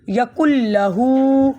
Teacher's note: ہا کے اوپر الٹی پیش ہے، الٹی پیش کا مطلب ہوتا ہے 2 حرکات